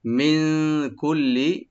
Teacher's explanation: মিন নুন সাকিন এখানে আমরা ইখফা করব